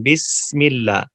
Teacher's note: سین کی آواز میں سیٹی ہوتی ہے